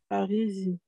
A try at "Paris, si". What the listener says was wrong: Non, SS, pas Z.